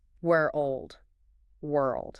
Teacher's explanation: To make that L sound, your tongue has to release from the back and swing forward to tap right behind your top front teeth. So, you are physically moving from a retracted tongue to a forward tap